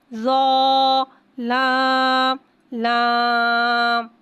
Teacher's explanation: ज़ा को एक अलिफ यानी 2 हरकत के बराबर खींच के पढ़ेंगे। ज़ा हुर्फ़ मुस्तआलिया है, लिहाजा इसकी आवाज़ हलक से मोटी अदा होएगी। लाम को एक अलिफ यानी 3 हरकत के बराबर खींच के पढ़ेंगे।